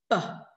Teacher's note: peh sound itu adalah bilabial, dua bibir mengatup jadi satu peh.